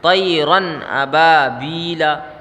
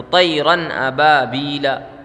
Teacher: تو یہاں پر اظہار ہوگا، یعنی کہ نون کی آواز ظاہر ہوگی یہاں پہ، طیرن ابابیلا۔ دیکھیں یہاں نون کی آواز ظاہر ہو رہی ہے رن میں، ٹھیک ہے، غنہ بھی نہیں ہو رہا